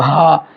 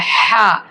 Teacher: छोटा हा का साउंड भारी होता है हा, और बड़ा हा का साउंड बारीक होता है हा, तो बारीक साउंड के साथ पढ़ेंगे।